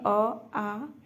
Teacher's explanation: स्वरों का उच्चारण स्थान कंठ स्वर में अ आ